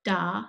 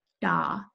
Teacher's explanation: that's a distinction between a dental da and a retroflex da · a distinction between a dental da and a retroflex da, or dental ta, retroflex ta, whereas in English we have only a single sound, an alveolar da, that is where we put our tongue on the alveolar ridge to produce a D in English.